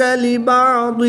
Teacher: ضاد حروف مستعلیہ میں سے ہے تو اس کو ہم پر یعنی موٹا پڑھیں گے